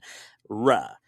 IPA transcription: ɹ̈